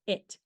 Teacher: the word b short I near Clos near front unrounded vow the tongue is located high in front position in the mouth the short eye makes the it sound like in the middle